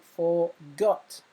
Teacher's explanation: and the final syllable is stressed